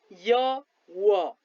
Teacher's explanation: अर्धस्वर व्यञ्जन वर्ण भनेको के हो यो कसरी उच्चारित हुन्छ भने व्यञ्जन वर्ण भएर पनि स्वर जस्तै उच्चारण हुने तर जिब्रो केही माथि उठी उच्चारित हुने